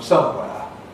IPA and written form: ˈsʌmweə (somewhere)